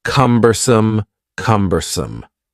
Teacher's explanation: The word cumbersome has three syllables and the stress is on the first syllable.